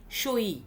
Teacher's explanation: তারপরে বাংলা এলো কি সই, দন্তে স যুক্ত অ যুক্ত হস্যই। দেখো, সহির অ এবং ইর মাঝখানে যে হটা ছিল সইতে, সেই হটা আমরা তুলে দিলাম। অর্থাৎ মধ্যে যে ব্যঞ্জনধ্বনিটা ছিল সেই ব্যঞ্জনধ্বনিটাকে আমরা লুপ্ত করে দিলাম। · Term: মধ্যব্যঞ্জন ধ্বনির লোপ